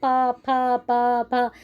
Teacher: आपके ओष्ठ जो है ऊपर नीचे हिलेंगे, एक दूसरे से जुड़ेंगे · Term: ओष्ठ्य